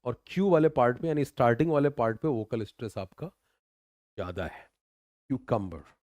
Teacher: स्टार्टिंग वाले पार्ट पे वोकल स्ट्रेस आपका ज्यादा है